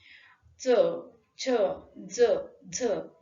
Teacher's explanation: बाहेर पडणारी जी हवा आहे ती तोंडाशी घर्षण करत बाहेर पडते. म्हणजे सुरुवात स्पर्श व्यंजनाप्रमाणे होते तर शेवट घर्षक व्यंजनाप्रमाणे होतो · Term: स्पर्श संघर्ष व्यंजन